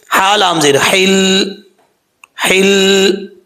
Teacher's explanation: جب ہجے کریں گے تو لام کو تھوڑا سا زور دے کے پڑھیں گے تاکہ شد کی جو ہاف حالت ہے وہ ہجوں میں پڑھی جائے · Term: مشدد حرف